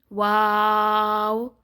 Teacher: होठों को जब हम गोल करेंगे तो क्या अदा होगा? वाओ